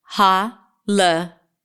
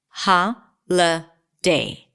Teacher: Now notice that I didn't say holiday because the middle vowel is a schwa sound. So I reduced the vowel there to a schwa.